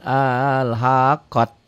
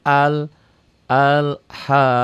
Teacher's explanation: tuh al al ha qoh jangan alhaqat jangan ta ya ini ta marbutoh apabila dihentikan bunyinya menjadi ha